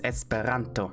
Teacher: The R is rolled. The R is more like the German R.